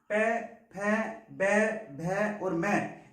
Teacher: जो हमारे होंठ हैं वो एक दूसरे को स्पर्श करते हुए दिखाई देते हैं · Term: पै वर्ग